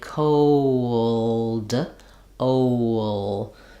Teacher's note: there's really the O diphthong, the W glide connecting them · So as I'm sliding, my rounded lips O unround, and that gliding happens.